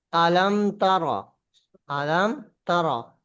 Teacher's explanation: মিম সাকিনকে বিনা গুন্নায় স্পষ্ট করে তাড়াতাড়ি পড়তে হবে।